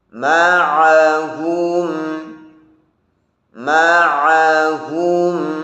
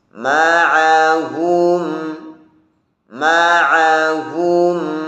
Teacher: rasakan sifat bainiyahnya dari ain, jangan sampai menjadi syiddah dan jangan sampai menjadi huruf tebal.